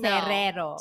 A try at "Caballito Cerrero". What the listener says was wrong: No, he can't roll, he can't roll his R's.